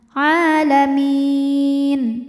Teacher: Maka jika berhenti mimnya ini boleh panjang 2, 4 atau 6 harokat asal konsisten dalam sekali bacaan. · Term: mad arid li sukun